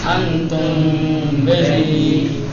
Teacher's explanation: ہونٹوں کو پوری طریقے سے ملنے نہیں دیا جائے گا. میم کو تھوڑا کشیدہ، تھوڑا کھینچ کر اس کے بعد فوراً بے کا تلفظ کیا جائے گا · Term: اخفا